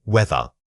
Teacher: Notice that the voiced sound appears not just at the beginning, but right in the middle of this word.